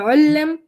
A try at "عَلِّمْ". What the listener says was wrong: Ooh, you love putting ooh on the commands. I don't know why. أمر منه أسلم you said أسلم الأمر منه علم it's supposed to be علم you said علم it's supposed to be أسلم you said أسلم you have a الأمر منه problem. So الأمر منه is going to start with a فتحة here.